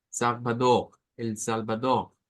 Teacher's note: Si lo hacemos con el acento portugués que no sonaría a la r tradicional nuestra sino a esa r gutural